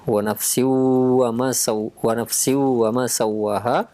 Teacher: Maka idgham bi gunnah kita tahan 2 harokat ya